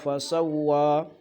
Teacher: سبح اسم ربک الاعلی الذی خلق فسوی، الذی میں کوشش کریں زیادہ تر زال کو نرم پڑھیں، اور فسوی واو پہ ہونٹ گول ہوتا ہے، یا پیش پڑھیں یا واو پڑھیں تو ہونٹ گول ہوتے ہیں، باقی کسی اور جگہ ہونٹ گول نہیں کرنے ہوتے ہیں۔